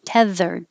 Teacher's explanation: the th is voiced